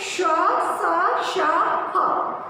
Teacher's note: जब हम इस उष्म व्यंजन का उच्चारण करते हैं तो गर्म हवा हमारे मुंह के रगड़ से बाहर की ओर आती है।